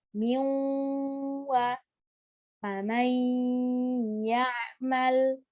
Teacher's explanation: seluruh suara gunnah tidak keluar lewat hidung, masih keluar sebagian lewat mulut. Wa yajibu fiha idharul gunnah bimiqdar harakatain. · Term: idghamu an-naqis bigunnah